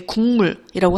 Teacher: 기역 뒤에 오는 미음 때문에 이제 이응으로 소리가 바뀌어 나는 것을 우리가 비음화라고 합니다. 즉 비음이 아닌 음운이 비음으로 바뀌기 때문에 비음화라고 하는 거예요.